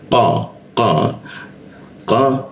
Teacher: huruf qa itu di siku tenggorokan ya. Nah, siku tenggorokan lidahnya kita naikkan ya, sehingga membaca huruf qa itu tidak ada hembusan udaranya. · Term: qof